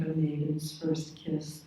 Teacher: the first kiss has two stresses next to each other